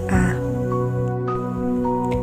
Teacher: vokal terbuka yaitu vokal yang dibentuk dengan posisi lidah serendah mungkin